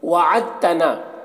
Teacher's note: وعدتنا میں دال یہ تا کے ساتھ مدغم ہو جائے گا، تو دال کو نہیں پڑھا جائے گا